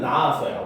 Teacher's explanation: 낫다에 아서가 붙게 되면, 그쵸? 얘는 먼저 나아서가 돼서 시읒 탈락이 일어납니다